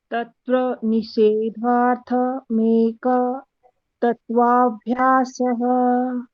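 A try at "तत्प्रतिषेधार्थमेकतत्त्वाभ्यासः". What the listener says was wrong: तत् निषेधार्थ नहीं है, तत्प्रतिषेधार्थ। तत्प्रतिषेधार्थ मेक तत्वा अगर मेक तत्वा बोल रहे हो तो भ्यासः बोलोगे, नहीं तो मेक तत्व अभ्यास।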